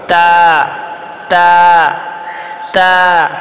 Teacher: উপরের যে দুই দাঁত আছে সেই দুই দাঁতের গোড়ার সঙ্গে জিহ্বার আগা লাগাবো আমরা। তা, দুই দাঁতের গোড়ার সঙ্গে জিহ্বার আগাটা লাগাবো।